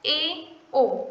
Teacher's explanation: जिन स्वरों के उच्चारण में मुख संवृत्त स्वरों से थोड़ा अधिक खुलता है उन्हें अर्धसंवृत्त स्वर कहते हैं